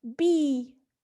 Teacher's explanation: when pronouncing the vowel E, the tongue remains high